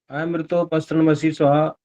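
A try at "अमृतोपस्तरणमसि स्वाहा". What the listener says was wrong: बड़ी बोलते रहे आप वहां पर, और अमृतो भी बोलते रहे। अमृतो नहीं बोल सकते, ओम अमृतो, अमृतो अम नहीं बोल सकते।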